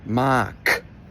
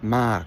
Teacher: Notice how my voice just completely cuts out. That's what we call a dead syllable.